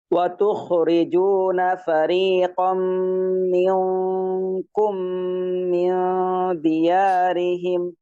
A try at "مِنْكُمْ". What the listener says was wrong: এই যে মিনকুমের কাফের গুন্না মোটা হবে না, পাতলা হবে, এটা পাতলা হবে, ঠিক আছে? কাফের গুণ লাগাই দেন মিনকুম